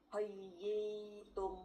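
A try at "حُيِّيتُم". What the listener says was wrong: Lagi huyi bukan ho tapi hu. Huyitum.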